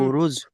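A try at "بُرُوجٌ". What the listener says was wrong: বুরুজ, এখানে ওয়াও মাদ্দা টান দিতে হবে না, বুরুজ। হুম আগে কলকলা করবেন, জিমকে কলকলা করবেন, জিম হুরুফে কলকলা কলকলা করবেন, বুরুজ।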